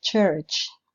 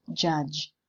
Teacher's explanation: the one which is voiceless at the beginning and at the end of the word church and the one which is voiced at the beginning and end of the word judge their place of articulation is palato-alveolar but in addition to this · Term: affricate phonemes